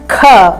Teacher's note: Ka and Kha, where the child puts more breath on the sound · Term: aspirated sound